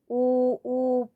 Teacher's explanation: और ऊ बोलने पर हमारे होठों की शेप गोल हो जाएगी